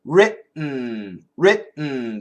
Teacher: If we move the tongue, writ. Don't move the tongue. Keep the tongue there, writ, and then make the N sound.